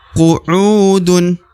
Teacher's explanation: U dibaca 2 harokat karena terdapat waw sukun atau waw mati di depan huruf u. Qu'udun. Ini un harokat un ya, huruf da harokat un dibaca dun ya.